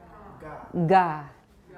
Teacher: I made the voicing pretty strong. This is a fully voiced initial stop.